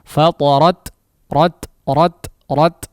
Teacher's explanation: ada semacam sifat hams di situ, ya, atau semacam udara yang dikeluarkan setelah merapatnya antara kedua sisi makhraj, ya. Nah, di sini perlu ada dikeluarkan semacam udara atau suara, ya, atau udara, ya.